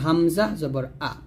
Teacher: এটা হবে হলকের শুরু থেকে